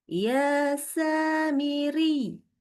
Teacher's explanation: Kita tekan dan tekan itu hanya dalam satu harakat. Jadi satu kali tekan dan tidak boleh ada pemanjangan.